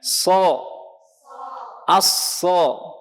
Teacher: Maka ketika ingin mengisti'lakan, menebalkan, maka pangkal lidah kita naik ke langit-langit mulut dan lidah dalam keadaan menegang